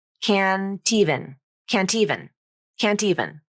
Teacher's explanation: t consonant naturally moves over to the beginning of the next word · n and a vowel it can be dropped from the pronunciation so can't even becomes can even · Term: nasal flap